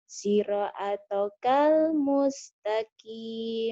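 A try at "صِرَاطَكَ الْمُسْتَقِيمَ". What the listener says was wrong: Itu bukan punya alif barisnya, Neng. Alifnya itu pemanjang.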